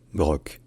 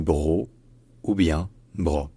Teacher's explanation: il y a pas de C, il n'y a pas de K à la fin. C'est bro ou bien bro.